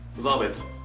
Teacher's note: The sound the in MSA is actually pronounced as z in Levantine. It is a similar sound to zai, but by bending or arcing the back of your tongue, so it becomes z.